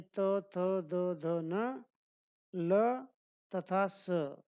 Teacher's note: जिनके उच्चारण में हमारी जीभ ऊपर के दांतों को स्पर्श करती है उसे क्या कहते हैं? दंत कहते हैं।